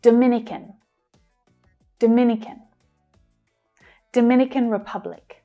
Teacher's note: now we're stressing the second syllable and the others become short and fast.